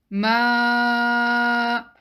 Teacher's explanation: alif mad sound is coming from the empty space of the mouth